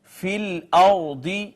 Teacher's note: را ساکن ہے، اس کو موٹا کر کے پڑھیں گے اس وجہ سے کہ ما قبل اس کا مفتوح ہے